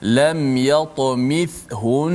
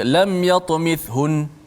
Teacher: kena dengung juga sebab nun tu sabdu